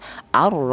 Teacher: Ra seperti itu, ya, untuk menebalkan huruf ra atau dibaca tebal, ya, untuk menebalkan huruf ra yang dibaca tafkhim ini atau huruf ra yang berharokat fathah ini menggunakan lidah bagian belakang diangkat